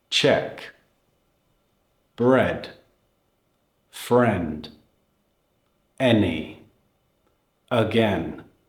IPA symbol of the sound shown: e